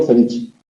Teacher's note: pronuncio ceviche situando la lengua detrás de los incisivos superiores, en lugar de situar la lengua sobre los alveolos que están encima. No digo ceviche, como dicen en Lima, digo ceviche.